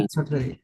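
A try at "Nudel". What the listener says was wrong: নুডল। ডুল না, নুডেল। নুডেল।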